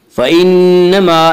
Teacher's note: फ़इन्नमा नून मुशद्दद गुन्ना होगा, गुन्ना की मिक़दार 1 अलिफ है · अलिफ मद्दा को 1 अलिफ के बराबर खींच कर पढ़ेंगे।